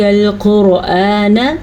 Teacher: قاف کو پر پڑھنا ہے کیونکہ قاف حروف مستعلیہ میں سے ہے. را کو پر پڑھنا ہے کیونکہ را جو ہے وہ ساکن ہے لیکن را سے پہلے حرف کے اوپر پیش ہے، اسی لیے را کو پر پڑھنا ہے.